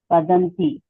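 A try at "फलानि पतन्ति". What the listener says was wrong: Patanti. Not padanti, it is patanti. You have to say Patanti.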